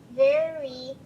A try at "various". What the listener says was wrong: forgot the OUS. You forgot the OUS. Very, remember O and U when they're together usually sound like So very,